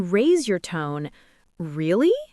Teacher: if you raise your tone, really? It sounds surprised or curious.